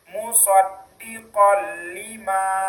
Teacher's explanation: Ada nunnya kan musdiqon. Tapi karena disambut oleh lam maka bunyi nunnya hilang langsung masuk ke bunyi lam. Jadi bacaan yang benar adalah musoddiqon lima.